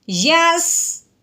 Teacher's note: اب یہ یا کو ہم نے سین ساکن کے ساتھ ملانا ہے، ٹھیک ہے، اس جزم کی وجہ سے۔ تو یا کو سین ساکن کے ساتھ ملاتے ہوئے ہم نے سین کی سیٹی کی آواز بھی نکالنی ہے، یاسین زبر یس، ٹھیک ہے، یس، اس طریقے سے۔